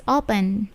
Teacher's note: Okay, perhatikan P-nya itu tidak plosif.